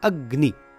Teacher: बोलते समय ध्यान दिया जाए तो एक हल्का सा अतिरिक्त गकार आता है, जैसे अग और ग्नि। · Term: यम वर्ण